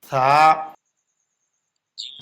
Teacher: বা তা জিহ্বার গা উপরের দাঁতের গোড়ায় ভিতর দিয়ে লাগবে, মুখ খুলে দিবে, এক আলিফ পরিমাণ লম্বা হবে। তা থা জিহ্বার আগা উপরের দাঁতের আগায় লাগবে, জিহ্বা এবং দাঁতের ফাঁকে বাতাস বের হবে, এক আলিফ পরিমাণ লম্বা হবে, পাতলা আওয়াজ হবে।